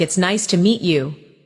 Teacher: Notice the rise and fall of the tone. The voice goes up slightly at nice and falls gently at you.